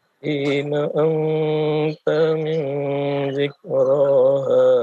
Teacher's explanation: Fima anta ikhfa'nya ditahan lagi 2 harakat.